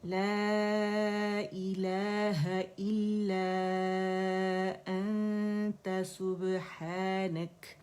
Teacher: لا جو ہے باریک دائرے سے 4 کاؤنٹس ہم کھینچیں گے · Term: مد منفصل